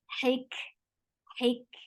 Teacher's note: For kasra, give E sound attached with kaf. Kaf will get hams. Yes, hams. And hams is a flow of breaths.